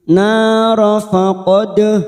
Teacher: dal sukun qalqalah sugro karena mati asli di tengah kalimat kita patulkan